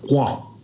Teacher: our old people used to pronounce it kwa, like more of a K-O-A